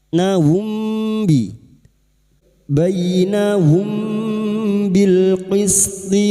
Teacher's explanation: Mim sukun dibaca dengan samar, bersiap untuk membunyikan huruf ba. Kami menyenandungkannya selama tiga harakat. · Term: ikhfa syafawi